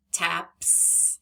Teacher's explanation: Now that s is making the s sound because pp is unvoiced.